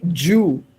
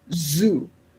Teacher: When you say z, it is alveolar. When you say j, it is palato alveolar.